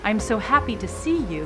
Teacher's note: often in Italian HS are dropped so I'm so happy to see you becomes I'm so happy